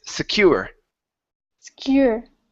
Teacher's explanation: the stress is on the end with this word